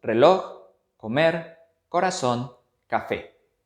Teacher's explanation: Su sílaba tónica se ubica en la última posición. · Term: Palabras agudas